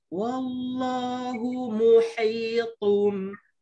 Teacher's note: Yang kat sini ada ha, ada ta. Ha kena pedaskan, ta kena tebalkan.